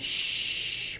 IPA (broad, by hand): ʃ